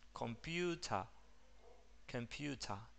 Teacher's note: El sonido de la schwa es el sonido característico del acento inglés, porque al final, en una palabra, cuando una palabra termina en ER, o vamos a ver que aparecen en varios sonidos, como por ejemplo en computer, el sonido de la schwa reemplaza el sonido de la E y la R al final